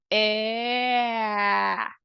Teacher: é nem um nem outro é uma mistura dos dois então É como se você fosse falar um som de é mas com a boca bem mais abertona com a mandíbula bem caída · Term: mistura de A com E